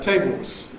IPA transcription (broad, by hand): ˈteɪboz